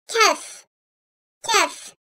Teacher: Kef harfi, kaf harfinin biraz berisinden dilin ön tarafı üst damağa değdirmeden çıkarılır. Sert bir harf olan kef, ince sesli ve kuvvetlidir.